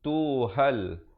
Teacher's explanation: alif lam qamariyah. Lamnya disebutkan dengan jelas.